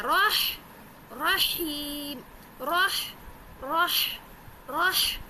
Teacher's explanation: ہا کو درمیان حلق سے ادا کرنا ہے